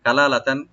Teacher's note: কাপটাকে open রাখবেন, আর লামটাকে open রেখে এক আলিফ টানবেন। দ্বিতীয় লামে কোনো টান নাই, আর তান যেটা তানবিন আছে লাস্টে, এখানে এজাহার করবো আমরা, কালালাতান।